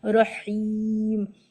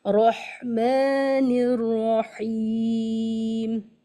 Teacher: ٹھنڈی سانس کے ساتھ، مطلب ایک ایئر فلو باقی رہے، مڈل تھراٹ سے آپ ادا کریں